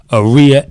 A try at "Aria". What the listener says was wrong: It's actually Aria. You got to put the emphasis on the right syllable.